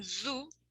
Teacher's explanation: Then we have another place of articulation that is alveolar. The sounds are produced when the blade or the tongue is placed against the alveolar ridge